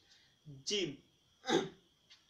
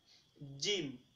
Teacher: জিমটা একটু শক্ত, জিব্বের মধ্যখান আর উপরের তালুর সাথে একটু হালকা মিলবে